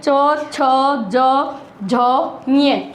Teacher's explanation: तो जब भी हम ये 5 वर्ण जो बोलेंगे ना, जब हमारी जीभ कहाँ लगेगी, जाके हमारे तालु में लगेगी, तो इसलिए इनको तालव्य बोलते हैं। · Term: तालव्य वर्ण